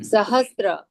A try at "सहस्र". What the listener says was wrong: त्र नहीं बोला जाता है, र बोला जाता है, सहस्र।